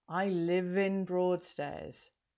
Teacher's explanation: we link those two words together because we've got the v sound at the end of live before the vowel sound of in